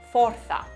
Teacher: Fuerza se dice forza, es con la O abierta